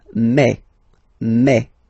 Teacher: Remember when you combine this a and then e vowels, you get the sound e. So really open e.